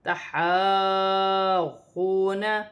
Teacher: یہاں پر الف مدہ ہے، اور یہاں پر یہ اس کلمے پر ہا پر کھڑی زبر ہے، اور کھڑی زبر پر بڑی مد ہے، مد متصل. اسے 5 الف کی مقدار تک کھینچ کر پڑھا جاتا ہے، اور غاد مشدد ہے.